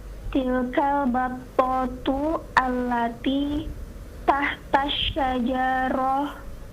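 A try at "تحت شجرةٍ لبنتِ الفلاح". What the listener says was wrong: Hidupkan semua harakatnya. Tahta syajarati.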